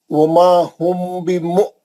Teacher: हमज़े साकिन का झटका देंगे, फिर उसके बाद 6 हरकत करेंगे